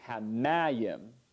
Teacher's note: And mayim is stressed milel, not milra.